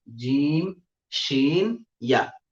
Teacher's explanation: জিম শিন ইয়া হচ্ছে জিহ্বার মধ্যখান তার বরাবর উপরের তালুর সঙ্গে লাগাইয়া এই ৩ টা অক্ষর।